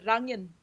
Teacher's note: like Trøndersk they say rangen. Yeah, they have like the skarre R.